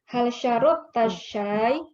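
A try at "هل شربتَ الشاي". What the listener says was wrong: Bukan syarabta, syaribta. Salah babnya. Iya, syariba yashrabu.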